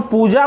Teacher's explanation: जब हम पूजा बोलते हैं तो आप देखेंगे हमने पूजा बोला है, अर्थात हमने जब उच्चारण किया तो वहां पर हमने ह्रस्व का उच्चारण नहीं किया, क्योंकि हम जैसे ही बोलते हैं पूजा तो प के नीचे जो स्वर मात्रा लगा है उस पर जोर लगता है, अर्थात वो लंबे समय तक बोला जाता है पू। तो अर्थात यहां पर जब हम लिखेंगे तो ये दीर्घई स्वर मात्रा को लगाएंगे, तो पूजा ऐसे लिखना शुद्ध होगा। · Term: दीर्घ उ